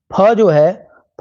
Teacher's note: फ जो है फ महा फ जो है अगर मैं देखूं तो ये अल्पप्राण नहीं है। ये तो खुद पहले ही महाप्राण हो गया।